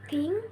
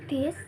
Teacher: Oke, next is a linguodental or dental sounds are produced when the tip of the tongue is placed between the upper and lower teeth